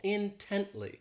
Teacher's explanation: this adverb has three syllables and the stress is on that second syllable